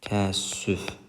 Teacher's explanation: Təəssüf sözündə ənin birisi düşdü.